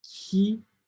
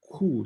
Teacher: Most people think that this is the same sound, but in fact, this is a palatal qui, and this is a velar ku, qui, ku. So try to pronounce them, you will see that your mouth takes an entirely different configuration, and it's not the fault of the vowel E and U.